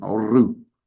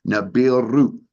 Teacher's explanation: that is pronounced Nibiru with a rolling R at the end